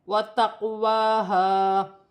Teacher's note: قاف ساکن ہے، اسے قلقلہ والا حرف ہے قاف، تو قلقلہ پیدا ہوگا ، جیسے وَتَقْوَاهَا، واو پر کھڑی زبر ہے، اسے 1 الف